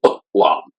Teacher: There's another word, olam, in Hebrew, and I understand that the ayin character here, it's called an ayin. My professor pronounced that with a glottal stop.